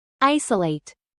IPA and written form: ˈaɪsəˌleɪt (ISOLATE)